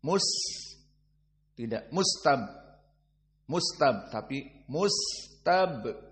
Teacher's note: Maka di sini sifatnya ar-rakhawah, mus panjang sedikit.